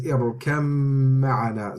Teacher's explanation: So the kaf goes straight into the meme. So this is idgham in here.